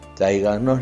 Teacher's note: llevan la mayor fuerza de voz en la sílaba anterior a la antepenúltima sílaba las palabras sobre esdrújulas al igual que las esdrújulas siempre tilde